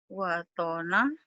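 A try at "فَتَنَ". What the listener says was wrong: bukan wa tapi fa itu ya. Fa.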